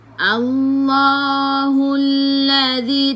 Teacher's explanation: dzi, hujung lidah keluar pada gigi depan